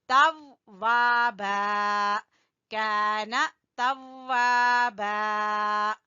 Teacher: यहाँ पे वाव 2 दफा पढ़ा जाएगा, एक दफा जो है साकिन है ता के साथ मिलके, और एक दफा अपनी जबर के साथ।